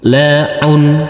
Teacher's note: huruf Ain yang berdamah tanwin ini jangan lupa dikasih akhiran huruf N